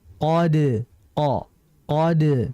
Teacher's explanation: Ingat qof tidak boleh ada desisan.